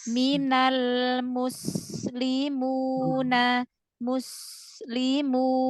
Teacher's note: Huruf sin alirkan, jangan ngerem.